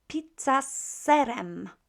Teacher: s is unvoiced so what do we do with z we make it unvoiced as well